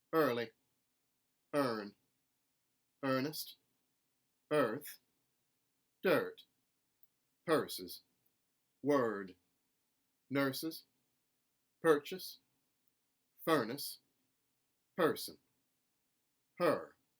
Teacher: we're going to keep the er sound and it's going to sound like a general american er